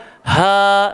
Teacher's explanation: Ha dengan hamzah keluar dekat batang tekak paling bawah. Tapi dia bukan huruf tebal. Jangan kita baca ho, jangan baca o, salah. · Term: huruf rongga